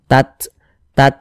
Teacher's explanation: Jadi ada nafas yang mengalir ketika kita mengucapkannya. Tapi dia seperti memercik saja. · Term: sifat hamas